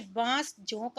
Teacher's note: वह अनुनासिक के ध्वनि जो स्वर के साथ जोड़कर बोली जाती है। इसके संकेत के रूप में ए, आ के साथ चंद्र बिंदु तथा ए, ओ की मात्रा के साथ बिंदु का प्रयोग किया जाता है, जैसे बांस, जोंक आदि। · अनुनासिक है एक नासिकीय ध्वनि जो नाक के द्वारा बोला जाता है।